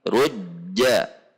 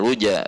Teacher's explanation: Jim sifatnya adalah siddah seperti tertahan